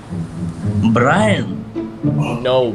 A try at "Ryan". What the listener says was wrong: No B.